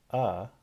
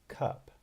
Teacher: the vowel is produced with the tongue low open mid or low mid what does that mean so not open and not closed but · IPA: /ʌ/